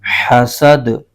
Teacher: دال پر زبر ہے اور آگے وقف تام کی علامت ہے، وقف کی، یہاں پر وقف کریں گے تو دال کی زبر ختم ہو جائے گی اور یہ حرف ساکن ہو جائے گا، اور یہ دال حروف قلقلہ میں سے بھی ہے، اس کو پڑھتے ہوئے قلقلہ بھی ظاہر ہوگا